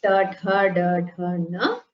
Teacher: They are pronounced by rolling the tongue backwards, and when the tongue touches the hard palate of the mouth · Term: murdhanya varnas